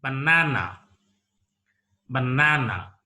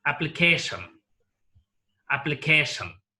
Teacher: Application is a polysyllabic word. Here, the stress is used on the second syllable from the last, penultimate syllable. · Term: primary stress